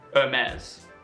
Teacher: you do not pronounce the H and you make the Xia very soft in the end Hermes